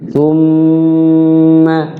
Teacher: Artinya mimnya dibaca jelas, jangan samar. Summa mim bertasydid tajibu gunnah, wajib gunnah di situ.